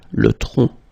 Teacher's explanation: final C is not pronounced here